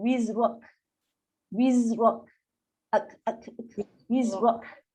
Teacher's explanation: Kaf ada sifatnya angin yang terlepas kan. Tertahan dan terlepas.